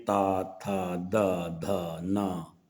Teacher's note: ये व्यंजन जीभ के अगले भाग को दांतों के अंदरूनी भाग से स्पर्श करते हुए बोले जाते हैं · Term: दंत व्यंजन